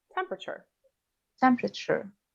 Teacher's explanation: In temperature, the second E after the P is often not pronounced. Great. So you can link the P to the R